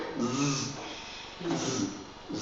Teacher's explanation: it gets that z sound that voice sound that vibrating sound if there's a consonant in front and a consonant behind that